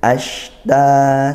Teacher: Shin itu dari tengah lidah makhrajnya. Tidak pakai bir, bukan tidak perlu pakai bir, tapi dari tengah lidah. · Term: tafasyi